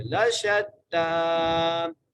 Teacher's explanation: سعیکم لشتا، لام زبردہ، شین کو تا سے ملانا ہے اور تا کے اوپر کھڑی زبر ہے، اس لیے ہم تا کو کھینچ کے پڑھیں گے